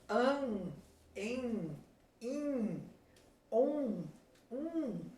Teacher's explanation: se vocês tocarem o nariz, vocês vão ver que ele trepida, porque é por ali que o ar está saindo e o som está sendo produzido. Então, ele vai formar exatamente o som nasal.